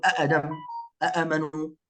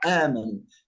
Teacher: لا، هو مد البدل أصله همزتان، مد البدل أصله همزتان متتاليتان، مثل آدم نقول أأدم هكذا، آمنوا، لكن أبدلنا الهمزة الثانية حرف مد حتى يكون النطق سهلا، لا نستطيع أن نقول أأدم أأمنوا، لكن نقول آمنوا، فالمد هنا في حرف المد وليس في الهمزة، والمد مقدار حركتين فقط